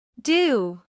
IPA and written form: duː (do)